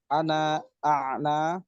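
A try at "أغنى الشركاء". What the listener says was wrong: Ini salah, bukan a'na tapi agnas syuraka'i. Ya, pakai go, bukan ain.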